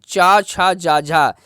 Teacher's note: ठीक है, तो आपका जो जा है वो आपका स्पर्श तो है लेकिन संघर्षी, स्पर्श के साथ साथ ये संघर्षी भी है, क्योंकि इसके बोलने में आपको संघर्ष थोड़ा सा करना पड़ता है। आपके मुख से जो हवा होती है वो रगड़ के साथ निकलती है, इस वजह से आपका इस स्पर्श संघर्षी व्यंजन है। · चा, छा, जा, झा, ये चारों वर्ड आपके जो हैं वो आपके स्पर्श संघर्षी व्यंजन कहलाते हैं।